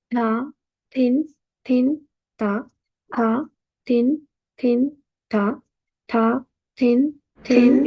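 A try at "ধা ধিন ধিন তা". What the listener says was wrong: You all are saying any syllables, all three of you all. You all are not pronouncing the syllables correctly. You cannot say tha, tin, dhin anywhere. You have to say it as it is. Dha is dha, dhin is dhin, ta is ta, and tin is tin. They are all four different sounds.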